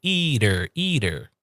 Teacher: There's a small little D sound.